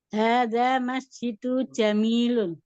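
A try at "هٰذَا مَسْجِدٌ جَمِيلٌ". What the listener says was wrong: Hadza masjidun, dalnya tanwin, jamilun.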